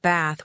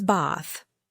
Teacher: In American English, I'd say bath like bath with a short A sound. In British English, it was bath, with a long A, like the sound you make at the doctor's office.